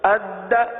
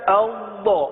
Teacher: دال میں جماؤ ہے لیکن قلقلہ بھی ہے، لیکن ضاد میں جماؤ تو تھوڑا سا محسوس ہوتا ہے، جماؤ کی سی صورت ہے، صفت استطالت ادا ہوتی ہے، لیکن آواز ٹوٹتی نہیں ہے، قلقلہ نہیں ہوتا